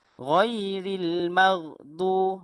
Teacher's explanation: apabila sebut huruf ghain yang mati tu, betul-betul di leher yang bahagian atas.